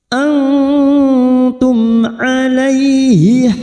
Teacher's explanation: mim sukun kita baca jelas tanpa mendengung